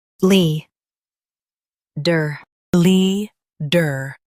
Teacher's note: Stress Lee and keep der light. Lee. Der.